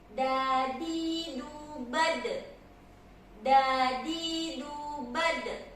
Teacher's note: ujung lidah bertemu dengan gigi belakang gigi seri atas ya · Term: huruf dal